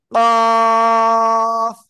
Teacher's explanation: জিব্বার গোড়া তারপর আবার উপরে তালুর সাথে লাগিয়ে মোটা আওয়াজে আমরা উচ্চারণ করব